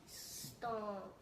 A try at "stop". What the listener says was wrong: Now this was stomp, but this is just stop. Stop.